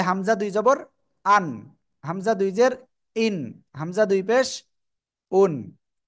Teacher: দুই জবর দুই জের দুই পেশ যেখানে থাকবে তাহলে সেটার উচ্চারণে শেষে দন্ত ন আসে